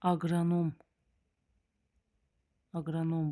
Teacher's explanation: vurğu da axıra düşür